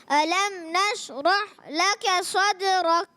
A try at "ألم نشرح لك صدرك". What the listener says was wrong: علم نشرح میں ہا کو اور کلیئر کریں تھوڑا.